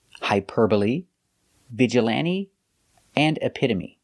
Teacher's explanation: because they end with e but the e is not silent we pronounce them all the same with a long e like green beans